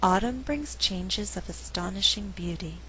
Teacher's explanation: The verb brings is not stressed because I want to create a good rhythm in the sentence. I alternate the stress, and what results is a rhythm like this: dun da dun, dun da dun, 1 and 2 and 3 and 4.